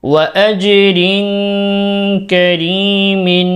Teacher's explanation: নিচে তানবিনের পরে ইখফার হরফ কাফ রয়েছে এজন্য গুণনা করব